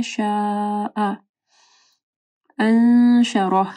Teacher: شاء مد ہے، اس کے بعد حمزہ ہے، 4 سے 5 حرکات کے برابر اس کو لمبا کرنا ہے. شاء انشرہ، نون ساکن کے بعد شین ہے، یہاں پہ اخفا غنہ ہوگا. انشرہ، رو موٹی پڑی جائے گی اور ہا جو ہے وقف کی صورت میں، سوری، ہا کا جو ہے آواز کلیئر ہونا چاہیے، ٹھیک ہے، وقف کریں گے.